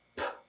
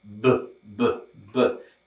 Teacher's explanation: What that means is if you put your hand on your neck while you're saying these sounds, and if you say this one, p, you won't feel any vibration on your neck. But if you say this one, b, b, b, you'll feel a vibration there.